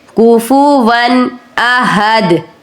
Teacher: हमज़ा हरूफ हल्की में से है, इसलिए आप तनवीन पर गुन्ना या इख्फा दोनों नहीं करेंगे। तो आप कहेंगे कुफू वन अहद, सिर्फ इजहार करेंगे, कुफू वन अहद, अहद।